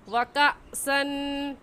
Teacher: व कअसन में हमज़ा साकिन आ गया और हमज़ा साकिन को झटका देकर पढ़ते हैं